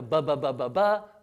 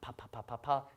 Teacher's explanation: When you say like a B sound, like a ba, vibrates. When you say a P sound, pa, doesn't vibrate